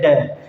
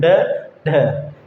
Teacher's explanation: जो हमारी जीभ होती है वह ऊपर उठकर और झटके से नीचे आती है, एकदम से नीचे लगेगी, वे उत्क्षिप्त व्यंजन कहलाते हैं।